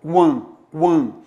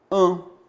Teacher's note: em AN, eu tenho um dígrafo vocálico, que vai produzir o som nasal an.